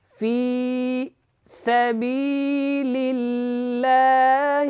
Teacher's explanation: وَقَاتِلُوا فِي سبیل اللہ الذین، یہاں پہ یہ جو لام ہے، یہ لام اللہ والا اس سے پہلے زیر ہے تو یہ کیا ہوگا؟ یہ باریک پڑھا جائے گا، اس کو موٹا نہیں پڑھنا